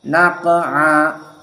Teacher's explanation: Qaf sakinah idan qalqalah as-sughra